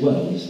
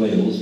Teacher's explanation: Well, that's an example of what they call a vowel shift. People nowadays, working class people more, I suppose, they say Wells rather than Wales when they mean Wales.